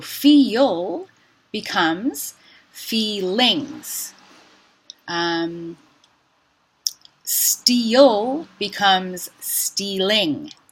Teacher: We've added a word ending ing, and now the L is shifting to be the coda on the first syllable, to be the onset of the next syllable, and it changes to a light L